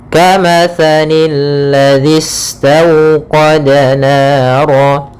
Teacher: Alif lam syamsiyah, yaitu alif lam yang ditulis tapi tidak dibaca alif lamnya sehingga langsung ke huruf lam yang ketiga, yaitu lam yang ditasydidkan.